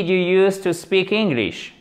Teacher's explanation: du coup on remonte au niveau de l'intonation sur la fin de la phrase